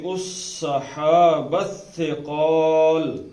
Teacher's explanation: صحاب میں ہے سین، صفیریہ ہے سیٹی کی آواز آنی چاہیے، اور یہ ثا ہے، اس میں ٹی ایچ کا مفہوم زبان کو دانتوں کے ساتھ لگا کے سے، صحاب نہیں، صحاب میں تو سیٹی ہے نا.